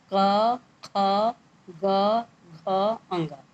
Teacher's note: कंठ यानी गले से बोल रहा था